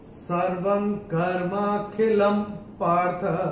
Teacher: ल के ऊपर ये जो अनुस्वार आ रहा है, उसके बाद का अक्षर है प, और अनुस्वार के बाद जब प आएगा तो अनुस्वार का उच्चारण होगा म।